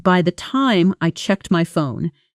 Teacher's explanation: By the time I checked my phone, the almost disappears into by time.